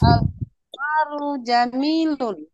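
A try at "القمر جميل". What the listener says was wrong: Iya, bagus.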